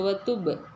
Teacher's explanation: சுகூன் வரும்போது இந்த இடத்துல கல்கலா உடைய லெட்டர் அசைச்சு ஓதணும்